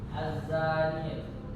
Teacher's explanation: alif lam mati yang bertemu dengan salah satu huruf syartiyah dibaca lebur atau idgham sehingga bunyi al tidak dibaca